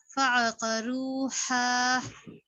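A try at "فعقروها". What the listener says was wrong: دیکھیے چھوٹی اور بڑی ہا میں فرق ہے. چھوٹی ہا کو بھی بڑی ہا بنا رہے ہیں.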